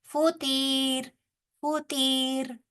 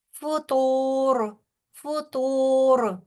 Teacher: تو بھی موٹا، را بھی موٹا